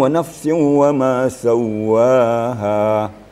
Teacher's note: ada penekanan pada huruf waw yang ada tasdid.